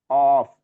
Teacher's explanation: kelompok lidah ya, masuk ke lisan atau lidah. Dia adanya di lidah bagian dalam atau pangkal lidah atau anak lidah.